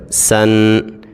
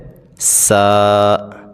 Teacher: سین کے اندر بھی سیٹی پیدا کریں گے